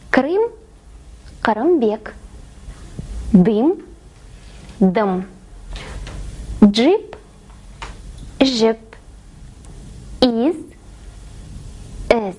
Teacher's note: Но казахские произносятся намного короче